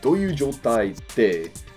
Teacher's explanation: the kind of like the glottal tsu, and then like te